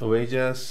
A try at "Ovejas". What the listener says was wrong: No, que es como brasileño eso. Ovejas.